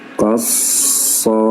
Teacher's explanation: Kos pangkal lidah masih naik